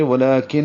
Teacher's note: کن میں نون مشدد ہے، غنہ کریں گے